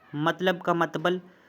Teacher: वर्णों का स्थान जो है वो चेंज कर दिया जाता है, बदल दिया जाता है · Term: वर्ण विपर्य